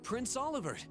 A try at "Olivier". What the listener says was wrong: Why do you pronounce the T?